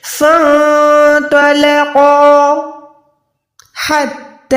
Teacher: اس وقفہ پہ میں 1 سے 2 سیکنڈ رکی، لیکن میں نے سانس کنٹینیو تھی